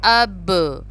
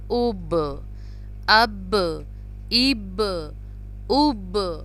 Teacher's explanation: با کو اب ہم پش کر کے پڑھ رہے ہیں، با پہ قلقلہ کر رہے ہیں